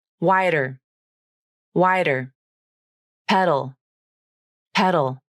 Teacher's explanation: Both the T and the D become the flap in these words.